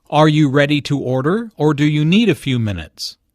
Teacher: need a few minutes the word or signals a choice here notice the rising intonation on order and the falling intonation on minutes